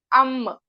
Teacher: और मीम दोनों होठों के खुश्क हिस्से से अदा होगा